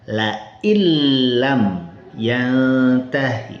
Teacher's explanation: Misal ada kalimat nun sukun bertemu dengan lam tertulis lain lam yantahi dibaca laillam yantahi. Nah, ini jadi nun sukunnya hilang masuk ke lam. Nah, itu ada nun sukun bertemu dengan lam, maka nun sukunnya hilang masuk ke lam tapi tanpa gun gunah, tanpa dengung. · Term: idgham bila ghunah, idgham bila gunnah